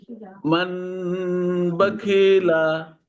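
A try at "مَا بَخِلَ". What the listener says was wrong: মানে হবে না, মিম মিম যাবার মাম হয়ে যাচ্ছে, তাহলে মাম বাখিলা। হ্যাঁ, ইজরা করেন, ইজরা করেন, ইজরা। মিমের উপরে।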